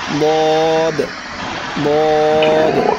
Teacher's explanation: উপরের মাড়ির দাঁতের গোড়ার সঙ্গে লাগবে এই দদ উচ্চারণ করার সময়